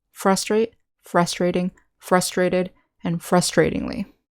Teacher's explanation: we say frustration with the syllable stress on the second syllable with the verb adjectives in adverb the syllable stress is on the first syllable